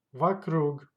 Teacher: Stressed goes to last syllable.